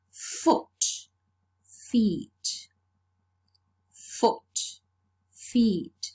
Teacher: the plural morpheme is not realized by means of assimilation its realized by means of the phonological process of vowel alternation we change the vowel we alternate the vowel o changes to